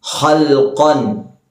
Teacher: ഖാഫിന്റെ മഖ്റജ് എന്ന് പറയുമ്പോൾ നാവിന്റെ അങ്ങേയറ്റം. നാവിന്റെ അങ്ങേയറ്റം മേലെ അണ്ണാക്കിൽ മുട്ടിക്കുക.